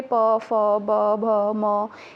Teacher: दोनों होठों के स्पर्श से बोले जाने वाले वर्ण ओष्ठ वर्ण कहलाते हैं। ठीक है, ओष्ठ के प्रोनाउंसिएशन से आप समझिए होठ, ओष्ठ, होठ।